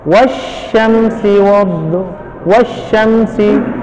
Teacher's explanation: pengucapan huruf disertai menyebarnya angin di dalam mulut, dan ini hanya dimiliki oleh huruf sya. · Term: at-tafasyi